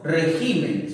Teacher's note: ¿Dónde está la mayor fuerza de voz? Está en la sílaba ji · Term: palabra esdrújula